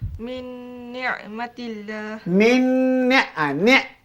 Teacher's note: Caranya mengangkat hujung lidah ke gusi hadapan di atas. Terkedah ke hadapan sedikit daripada makhraj lam. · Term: nun